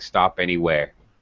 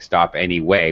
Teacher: you just didn't pronounce the r at the end of the word so it sounded like stop anywhere it sounds like stop anyway